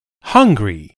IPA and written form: ˈhʌŋɡri (hungry)